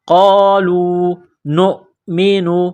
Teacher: نون کو حمزہ کے ساتھ ملانا ہے